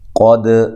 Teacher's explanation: قاف کو موٹا کرنا ہے، دال پہ قلقلہ کرنا ہے، دال کو ہلانا ہے